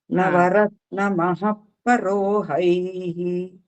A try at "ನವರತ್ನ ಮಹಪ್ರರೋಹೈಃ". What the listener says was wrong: ಪರೋ ಅಲ್ಲ ಪ್ರರೋಹೈಹಿ ಪ್ರರೋಹೈಹಿ ಪಕಾರಕ್ಕೆ ರಕಾರ ಇದೆ